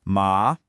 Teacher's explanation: So for ma meaning horse, you dip down and then rise up. · This is the dipping tone. Your voice has to go down first, and you should feel it get a little low, almost creaky in your throat, and then it has to come back up. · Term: the third tone, third tone